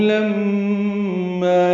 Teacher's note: لما میم مشدد پہ غنہ ہے اور ما الف مدہ ہے 2 حرکات لمبا کریں گے